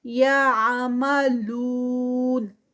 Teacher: یعملون لو پہ جو ہے وہ 4 کاؤنٹس کا اسٹریچ ہوئے گا کیونکہ وہ مدہ ہے اسٹاپ پہ ہے